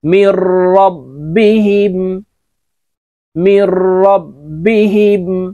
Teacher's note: নুন সাকিনের পরে ইদগামে বেলা গুন্নার হরফ র আসছে, তাই গুন্নাহ সারা পড়তে হবে , মিম র জের মির র বা জবর রব মির রব